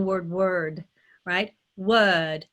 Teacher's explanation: there there just keep it relaxed there there yeah yeah so the vowels of r in a british dialect are just relaxed with your tongue staying behind behind your bottom teeth in a relaxed position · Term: british r